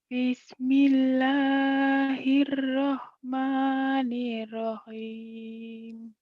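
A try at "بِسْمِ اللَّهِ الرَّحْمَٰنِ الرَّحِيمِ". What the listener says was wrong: Nirrahim. Tasjidnya kurang dikit. Nah, tambah, gak apa-apa, tar aja.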